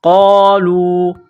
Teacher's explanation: قاف کو موٹا کرنا ہے